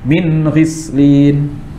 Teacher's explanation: tidak boleh ada tambahan gunnahnya ya, harus gunnah asliyahnya saja atau aslul gunnah